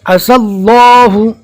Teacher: یا کو نہیں پڑھنا ہے، بہت سے لوگ عسى اللہ پڑھ رہے ہیں لیکن غلط ہے